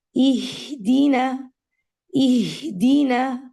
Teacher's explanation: قلقلہ کا مطلب ہوتا ہے آواز کا مخرج کو ٹکرا کے واپس آنا. تو آپ نے ہا کو آواز جاری رکھنی ہے, ٹھیک ہے, ہا کی جو ایئر ریلیز ہے وہ جاری رہنا چاہیے. اگر آپ اس کو کلوجر کی طرف لے کے جائیں گی تو جھٹکے کی آواز آئے گی.